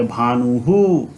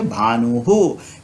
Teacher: उसी तरीके से भानु है, तो यहाँ जो विसर्ग आ रहा है यह विसर्ग यह ऊ के साथ आ रहा है, इसीलिए हम इसका उच्चारण हु के जैसा करेंगे, ह में ह्रस्व उ।